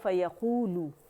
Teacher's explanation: بنے گی۔ پھر ہے فیقولو، ٹھیک ہے، فا باریک یا باریک، قو وا مدہ ہے، لو باریک ہے، ٹھیک ہے، اس کو 2 کاؤنٹ کھینچیں گے وا مدہ کو ، اور اس کو 1 کاؤنٹ کے لیے رول کریں گے